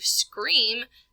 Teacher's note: the front of the mouth with the s the back of the mouth with the K